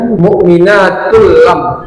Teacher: Idgham itu artinya memasukkan memasukkan ee huruf satu huruf ke huruf lainnya. Seharusnya kan dia mukminatun, tapi tun itu dimasukkan ke lamnya. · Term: idgham bila ghunah